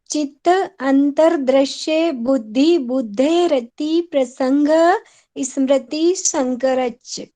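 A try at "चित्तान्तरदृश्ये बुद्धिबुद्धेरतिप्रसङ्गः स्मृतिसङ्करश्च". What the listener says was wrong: ऐसे ही बोल दिया आपने, एकदम हंसते खेलते,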